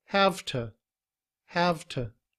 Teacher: But in reduced form we don't say have to. Instead the ooh in to becomes uh